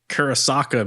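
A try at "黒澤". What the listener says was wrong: It's no K.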